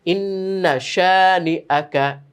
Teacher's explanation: কোনো টান নেই, গুন্না হবে